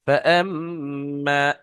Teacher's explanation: ফাআম্মা, দেখেন এখানে মিমটা একালিফ গুণনাও হবে তাসদীদ হওয়ার কারণে, আর একালিফ টানও হবে আলিফ মাদ্দা হওয়ার কারণে